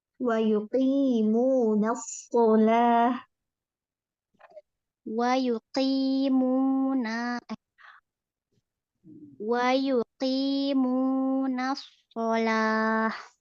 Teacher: Qi walaupun kasroh, qofnya qi jelas. Wa yuqi jangan tercampur sama ki.